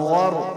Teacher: را بھی موٹا اور غین بھی موٹا ہوگا کیونکہ را سے پہلے زبر ہے